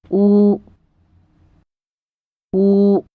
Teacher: your tongue back to make room inside your mouth compared to the sound ooh in the English word who the tongue is further back and the lips are more protruded